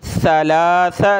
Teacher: सा पे ज़बान निकाली जाती है